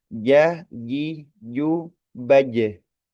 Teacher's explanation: untuk huruf jim itu huruf lidah tengah